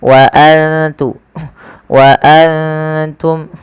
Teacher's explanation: Kita baca dengan bacaan ikhfa, yaitu cara membacanya menyamarkan suara nunnya kepada huruf ta.